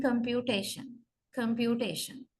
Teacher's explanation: And the next strong stress goes to the first syllable count. So we say third syllable receives the primary stress and first syllable receives the secondary stress